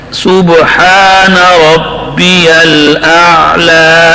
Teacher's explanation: عین کے اندر شدت نہیں ہے، توسط ہے، تو عین کو میں وہ گلہ گھونٹ کر نہیں پڑھتا، توسط سے پڑھتا ہے.